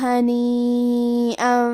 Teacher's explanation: یہ مد واجب متصل ہے، لہذا ہم اپنی آواز 4 مد کے برابر لمبی کریں گے